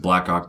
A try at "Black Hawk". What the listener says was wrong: Blackhawk? Blackhawk. Blackhawk. Blackhawk? I'm saying Blackhawk, dude.